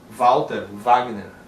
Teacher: vai ser consoante como um V em palavras de origem alemã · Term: som de V